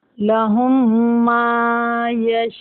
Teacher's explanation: यहाँ हमने वक्फ कर दिया यशाऊना, ये नून को भी साकिन कर दिया।